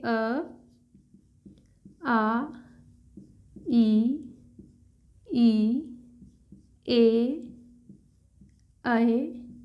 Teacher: अवृत्तमुखी यानी कि जिन स्वरों के उच्चारण में होंठ गोल नहीं होते